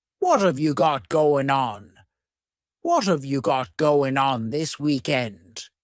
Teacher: what and have are going to be pushed together · That final G in the word going is going to be cut off, and we'll just say going. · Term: reduction or a contraction